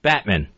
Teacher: it's the first syllable that needed the accent.